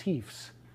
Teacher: what you're supposed to do is devoice the z